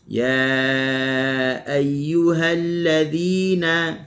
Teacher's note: kalimah alladzina huruf dhal, hujung lidah di hujung gigi atas, bagi bawah dhi kita kena sengih lah.